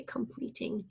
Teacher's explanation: Our first syllable is com, C-O-M. That O we call a schwa sound.